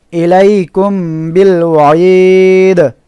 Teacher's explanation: এরপরে ইলাইকুম, কাফ মিম পেশ কুম, মিম সাকিনের পরে বা অক্ষর, এখানে নাকের বাসিতে নিয়ে গোপন করে গুন্নাহ করতে হবে।